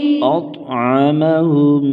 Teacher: طا کو موٹا کریں گے،